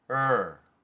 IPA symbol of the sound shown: ɝ